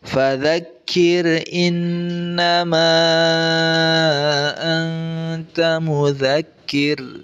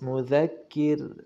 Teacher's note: Nah, dibaca ro tipis, mudzakir.